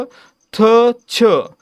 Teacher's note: ज्या वर्णांचा उच्चार करताना ह चा उच्चार होतो किंवा ह जोडून उच्चार होतो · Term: महाप्राण